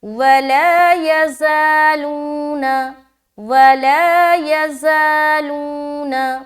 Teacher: یا کو اور نا کو بالکل بھی لمبا نہیں کرنا ہے